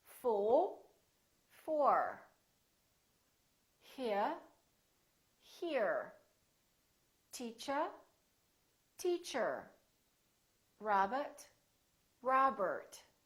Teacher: in british english people generally don't pronounce the final r the r at the end of the word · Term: british r